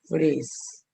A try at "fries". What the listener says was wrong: no se les olvide que es fries, no freeze. fries. La E se elimina y la I se pronuncia como si fuera una vocal. En este caso, fries. Fries.